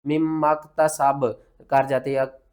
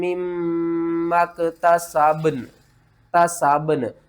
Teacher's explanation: یہاں پر جو ہے نا با، اس کے اوپر آپ نے قلقلہ کرنا ہے، اور نون با کے اوپر قلقلہ کر کے نون کے ساتھ ملانا ہے، ٹھیک ہے نا۔